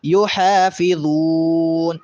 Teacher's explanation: یحا میں ہا کو واضح کریں گے اور وقف کرتے ہوئے تھوڑا لمبا۔ یحافظون، والذین هم علی صلاتہم یحافظون، اس طرح سے۔